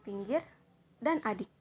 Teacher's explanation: I besar ini sama dengan I kecil, termasuk dalam vokal depan, tapi dalam vokal tinggi di bawah. Mulut tidak membundar, serta termasuk dalam vokal tertutup.